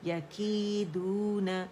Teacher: یا مد طبیعی حرکتین، 2 حرکتوں کے لیے آواز نیچے جائے گی